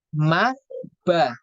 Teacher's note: kalau huruf mim dan ba itu ee rapat bibirnya